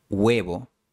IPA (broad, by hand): 'we.βo